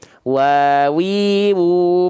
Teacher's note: kedua bibir dengan posisi maju seperti mengucapkan huruf u Seperti apa itu seperti ini nih Nah pastikan bibirnya maju pastikan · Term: huruf Wau